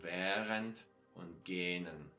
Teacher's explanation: this extra H sound, which only prolongs the vowel in front of it